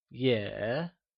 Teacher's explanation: It is said with a falling rising tone, also known as the third tone